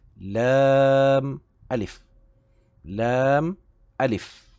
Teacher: Makhraj lam di gusi ujung, makhraj alif itu bersamaan dengan huruf makhraj hamzah, iaitu di bahagian kerongkong bahagian bawah.